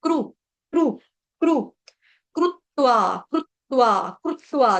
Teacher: संस्कृत में रू होता है, हिंदी में हम क्री कह देते हैं, कृत्वा। लेकिन संस्कृत में हमारा जो शुद्ध उच्चारण होता है वो क्रू होता है। संस्कृत में री नहीं होता, क्री नहीं होता, क्रू, क्रू, क्रू।